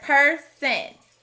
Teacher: this word has another schwa instead of hearing person with a short o we hear per sen since the rest of the word sounds